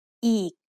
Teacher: Did you notice the tone when I say eek? It's a low tone.